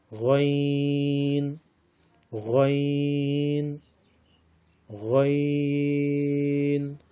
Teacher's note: ادنائے حلق سے منہ کی طرف والے حصے سے غین ادا ہوتا ہے۔